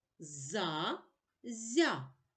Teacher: за зя перед а звук з твердий перед я звук зь м'який